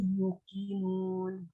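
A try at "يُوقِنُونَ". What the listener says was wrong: Yuqinun ya, yu-nya panjang.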